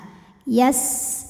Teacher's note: saofir itu artinya ada suara berdesis ya suara tambahan dari bibir kita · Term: sifat sofir